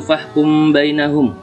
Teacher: Karena ada mim sukun bertemu ba, cara bacanya mim sukun dibaca berdengung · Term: ifa safawi